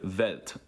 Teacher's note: They pronounce the W's with a V sound